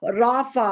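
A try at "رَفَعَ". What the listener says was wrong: रफा, फिर इसको आइन के साउंड को, मतलब जिस तरह आपने साकिन करेंगे, लेकिन आइन का साउंड थोड़ा जोर से समझ आए। जैसे ऊपर पढ़ा था ना आपने, जमा। राफा नहीं, ये आपने पढ़ा था ना, और जमा, वक्फन जमा, रफा।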